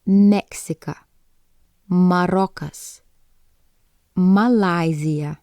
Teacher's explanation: the next letter is M and it makes the sound M when making the sound your both lips are pressed together and then push away